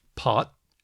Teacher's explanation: There's unaspirated T, like as in pot.